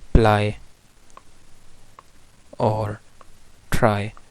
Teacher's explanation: ल और र जो है वो वॉइसलेस हो जाते हैं